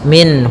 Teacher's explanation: ha termasuk huruf-huruf yang kita keluarkan dari alhalq itu tenggorokan kita. Maka suara nunnya harus jelas. · Kemudian minhu ada izhar halqi, yaitu ada nun sukun bertemu dengan ha, yang mana ha termasuk huruf-huruf yang kita keluarkan dari al-halq, yaitu tenggorokan kita, maka suara nunnya harus jelas. Minhu, tidak boleh ditahan, tidak boleh minhu, ya tidak boleh minna.